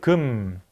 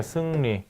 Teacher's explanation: 입을 거의 다물고 입을 평평하게 펴고 소리 내어야 한다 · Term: 후설, 평순, 고모음